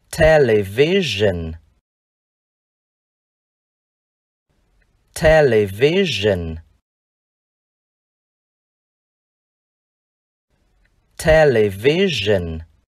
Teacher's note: Chữ S chúng ta cong lưỡi.